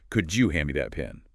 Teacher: The D and Y sounds blend into a J sound.